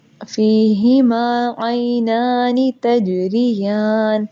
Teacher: فیہما، فی کے اندر دیکھیں یا مدہ بھی ہو رہی ہے اور الف مدہ بھی. فی، فا زیر یا ساکن فی، یا مدہ، اور میم زبر الف ما، الف مدہ، دونوں 2 سیکنڈ لمبا کریں گے